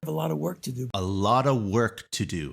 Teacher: a lot of is reduced to ALOTTA.